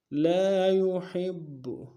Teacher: ہا کو گہرائی سے ادا کریں گے